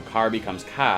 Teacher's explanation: Boston drops their R's, so car becomes ka